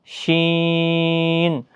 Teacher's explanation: زبان کا بیچ اور اس کے مقابل اوپر کا تالو، زبان یعنی بیچ والا حصہ اور اس کے مقابل اوپر کا تالو، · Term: حروف شجریہ